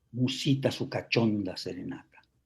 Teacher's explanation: un verso en decasílabo con acento en la sílaba sexta, en la O, es acento prosódico. Musicalmente se tiene que acentuar ese verso al decirse.